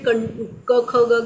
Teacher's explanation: क ख ग घ म्हटलं की कंठाच्या तिथेच तुम्हाला ते जाणवेल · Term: कंठव्य